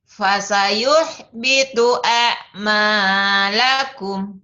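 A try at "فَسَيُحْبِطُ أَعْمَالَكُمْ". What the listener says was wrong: Tuh ya, di A-nya juga ngejeber. Jangan. Fasayuhbitu a'malakum.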